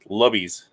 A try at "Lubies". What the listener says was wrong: Well, technically, it's vowel, consonant, vowel, so it would be Lubies, not Lubbies.